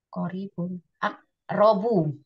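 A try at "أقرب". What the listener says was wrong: aqrabu. Polanya selalu af'alu. Huruf sebelum terakhirnya selalu fathah, nggak ada kasrohnya.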